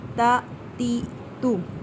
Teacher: تا کو نرمی کے ساتھ پڑھیں گے، اس میں جو لفظ ہے تا سیٹی نہیں آئے گی